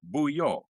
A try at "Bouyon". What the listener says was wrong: Yeah, the N is silent. It's Bouillon.